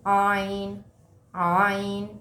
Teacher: آئین آئین، آئین حروف حلقی میں سے، آئین حلق کے بیچ سے ادا ہوتا ہے